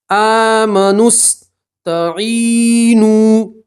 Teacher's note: نون کو سیدھا سین سے ملائیں گے. کھینچنا بھی نہیں ہے.